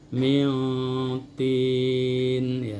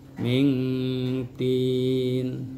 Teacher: ihfa akrob itu bunyinya sedikit di hidung, yang ke hidung dengungnya, tetapi lebih dominan ke mulut.